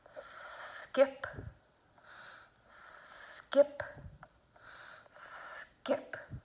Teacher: The K sound goes in the back. The S sound is in the front. So you want to make sure that you're using the good S, putting it behind your teeth.